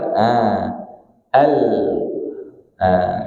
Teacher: lam itu huruf sisi lidah, ada yang mengatakan huruf ujung lidah